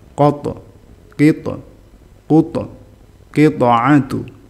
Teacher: qof sama tho itu huruf istilla jadi pantulannya ikut tebal